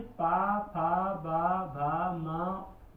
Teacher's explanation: ये दोनों ओठ से बोले जाते। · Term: ओष्ठ वर्ग